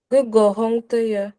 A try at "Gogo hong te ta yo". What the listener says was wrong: On dit aussi ta yo. Gogo hong te ta yo.